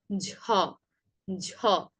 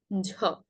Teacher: বেশি পরিমাণে বাতাস নির্গত করে উচ্চারণ করবেন ঝ